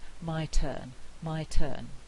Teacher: in my turn the i diphthong is shorter because of pre-fortis clipping it's not much shorter but it is a little bit shorter · in my turn the t is aspirated because it's word initial it's at the beginning and i have to aspirate this t here my turn my